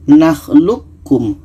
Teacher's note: Qa ini kita masukkan ke ka. Qa ini tidak jadi qalqalahnya.